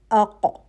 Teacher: زبان کی جڑ کا وہ حصہ جو حلق کے فوراً بعد ہے، جب اوپر نرم تالو سے قوت کے ساتھ لگے تو حرف ق ادا ہوتا ہے